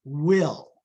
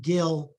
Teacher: has the labial Velar articulation which is a double articulation so it's a little tricky in that regard you have both